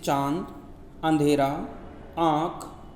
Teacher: इनका उच्चारण नाक और गले दोनों से होता है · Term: अनुनासिक